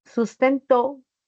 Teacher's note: la fuerza de voz recae en Esta última sílaba · al pronunciar recae en la última sílaba. Esa es la mayor fuerza. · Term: palabras agudas